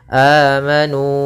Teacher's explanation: Sehingga di sini ada huruf mad. Awalnya amanu 2 harokat, karena datang setelahnya hamzah maka dibaca dengan 4 harokat. Amanu. Nah, maka kita namakan dengan mad jaiz munfasil.